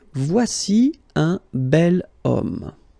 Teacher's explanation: it starts with the sound O, because if you remember carefully, H is not pronounced, so H doesn't exist phonetically